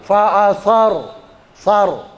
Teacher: Ya, jadi ujung lidahnya keluar sedikit, sa, ya, digigit, sa, za, sa sama zal, itu makhrajnya sama di situ, sa. Fa'asar, ro-nya dibaca tabkhim, ya, tabkhim itu berat